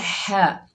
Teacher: ہا کو حلق کے درمیان سے ادا کریں گے